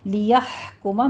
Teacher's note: لیحکم میں ہا پر ہمس ہوگی، وسط حلق سے ادا کرنا ہے۔